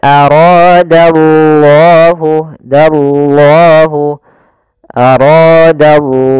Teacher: Kemudian pelafal ra, di sini ada mad tabi'i, fathah bertemu alif, ra-nya dibaca dengan tebal karena ra berharokat fathah · di sini lafal Allahnya tebal yaitu lafzul jalalah. Kemudian dia juga termasuk mad tabi'i, panjangnya 2 harokat.